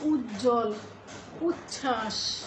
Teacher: বফলা যুক্ত দেখতে পাই কিন্তু সেই বফলাগুলো উচ্চারিত হয় না যেমন উজ্জ্বল এখানে কি রয়েছে বর্গীয় জ দুবার রয়েছে এবং তার